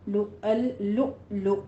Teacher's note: یہاں پہ لو حمزہ ساکن ہے، جھٹکے کے ساتھ پڑھیں گے